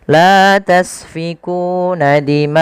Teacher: Kemudian pada lafal dima'akum, panjangkan huruf ma atau panjangkan bacaan ma sepanjang 4 harakat karena pada lafal ma ini ada bacaan mad wajib muttasil.